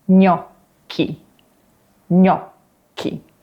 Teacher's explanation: the double K is really long with almost a little pause in the middle